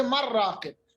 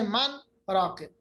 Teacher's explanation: یہ آپ کو 7 ایکسیپشن یاد رکھنی ہوں گی خود ہی, اور ان پہ چونکہ ادغام نہیں ہوتا تو پھر کیا ہوتا ہے, اس کو کہتے ہیں اظہار. یہ اسپیشل اظہار ہے, ظاہر کرنا نون کو